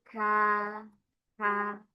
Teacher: pangkal lidah qo depan sedikit ka